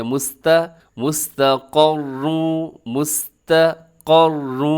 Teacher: قاف بھی موٹا پڑھا جائے گا، را بھی موٹا پڑھا جائے گا، لیکن تا باریک ہے